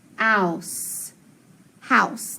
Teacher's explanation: It's going to be that diphthong, ow.